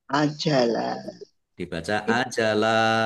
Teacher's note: fathah tanwin alif mad dibaca fathah dan panjang dua harakat. Namanya mad iwad.